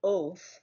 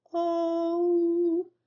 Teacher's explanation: Yet, [Music] when singing an O sound, as in the word o, the mouth shape should look like the letter O. Do not close to the ooh sound, which is the second half of the dip thong.